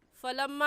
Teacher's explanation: فلما میں میم مشدد ہے اور میم مشدد پر ہمیشہ غنہ ہوتا ہے